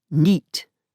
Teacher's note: in the northeast, night is pronounced as neat